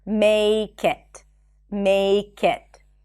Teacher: Instead of saying make it, the k becomes the beginning of the next word